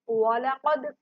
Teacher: वालाकद कद वाला मोटा पढ़ा जाता है, दाल साकिन है तो कलकला होगा, मतलब हिला के पढ़ेंगे या आवाज को पलट कर आना।